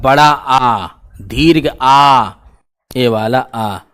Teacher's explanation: ऐसा कौन सा एक स्वर है जिसको बोलने में आपका मुंह जो है पूरा डिब्बा ऐसा खुल जाएगा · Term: विवृत